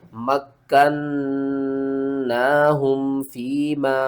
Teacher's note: میم کاف زبر مک، کاف نون زبر کن، نون کھڑا زبر نا، مکننا، ہا میم پیش ہم، مکناہم فیما، چھوٹی مد ہے، مد منفصل ہے، 3 الف کے برابر آپ نے کھینچ کر پڑھنا ہے